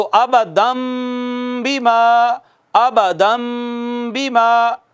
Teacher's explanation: नून साकिन या नून तनवीन के बाद अगर बा आएगी तो नून साकिन या नून तनवीन को छोटी मीम से बदल देंगे · چھوٹی میم سے بدل دیتا ہے۔ تو یہ ابدن جو تھا ابدم ہو گیا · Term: इक़लाब